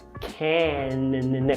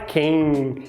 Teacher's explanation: A única coisa que eu quero que você faça é quando você pronunciar o can, você bater a língua lá nos alvéolos. Can.